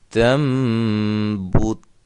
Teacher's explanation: یہ تا کو جو آخر میں تا ہے اس کو ہلانا نہیں ہے، کیونکہ یہ حروف قلقلہ میں سے نہیں ہے